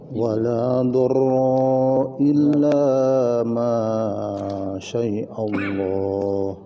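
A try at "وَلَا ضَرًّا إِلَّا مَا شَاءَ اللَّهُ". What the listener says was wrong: Ulang, awas di situ idhar ya, tanwin bertemu alif, bertemu hamzah. Wala dharran illa ma sya'allah.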